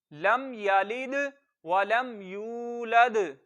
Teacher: इस पूरी आयत में सिर्फ या को लंबा करना है